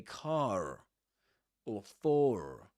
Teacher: in a rhotic accent, an R is pronounced at the end of car.